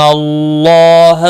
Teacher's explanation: اللہ کا لام زبر کی وجہ سے موٹا پڑا جائے گا، اس کے اوپر کھڑی زبر بھی ہے، ایک الف کے برابر کھینچ کر پڑھیں گے۔